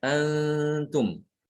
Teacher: ketika membaca ikhfa, maka bagian makhraj lisan itu yang ada pada nun itu dia tidak ada. Karena tidak nempel.